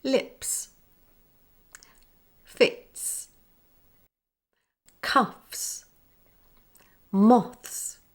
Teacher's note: When S follows an unvoiced consonant at the end of a word, its sound is unchanged and sounds like S.